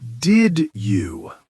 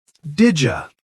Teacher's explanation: Did you becomes didja. Yeah, and it happens super fast.